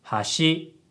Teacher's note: if you say hashi, it has a low-high pitch pattern, and it means bridge